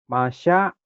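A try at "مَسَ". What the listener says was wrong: masa, ujung lidah, masa. Masa kecil ya, bukan. Kalau yang ada giginya ini, yasha, gede. masa ya, ingat-ingat ya. Yang nggak ada giginya metik berarti nggak ada giginya metik. Ini masa.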